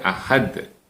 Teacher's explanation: Ahmad Hai dan seperti ayat yang lain ayat keempat ini juga diakhiri dengan huruf Dal yang harus kita pantulkan atau yang harus kita Qalqalah kan